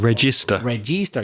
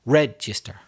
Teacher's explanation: You notice the stress is on the first syllable.